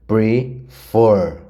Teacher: Prefer, o for é mais forte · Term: sílaba mais forte